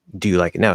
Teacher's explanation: I'm going to emphasize that ooh a little bit, hit the ooh sound, even though I'm speaking faster, to emphasize that it's present now instead of past, which we were talking about.